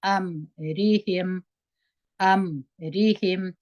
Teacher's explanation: پر میم باندې اظهار دی مکمل ادا کوو دواړه شونډان سره مشلو